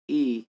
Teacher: तो आपका जीभ तुरंत जाके तालु में सटेगा, इसीलिए ई। और इचु यसा नाम तालु, कोई भी चावर का कहिए या ई कहिए तो सबसे पहले आपका वहीं जाके सटेगा, इसलिए इसको तालु कहा जाता है।